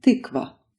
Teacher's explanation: A vowel with relaxed lips and a tongue position in between u and e.